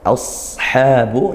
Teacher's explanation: Shad itu pangkal lidahnya naik karena dia tebal.